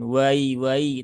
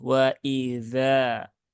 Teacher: Jangan sampai hamzahnya terayun, jangan wai tapi wa idza.